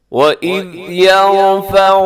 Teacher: یہاں پہ را موٹا پڑھا جائے گا کیونکہ را ساکن ہے یرفع میں، لیکن جب را ساکن ہوتا ہے تو ہم کیا کرتے ہیں، ہم اس سے پہلے والا حرف دیکھتے ہیں، اگر اس کے اوپر حرکت ہو تو پھر را موٹی ہو جاتی ہے، اور اگر را سے پہلے والے حرف کے نیچے حرکت ہو تو را باریک ہوتی ہے.